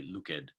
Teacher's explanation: it is a bit awkward to have like an ed at the end of like a past tense verb, but it's always more like a t sound